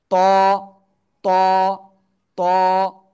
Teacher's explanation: জিব্বার আগা ওই উপরে দুই দাঁতের গোড়ায় লাগান লাগান লাগান লাগান, লাগিয়ে একটু মোটা আওয়াজে একালিপটা নিয়ে উচ্চারণ করতে হবে।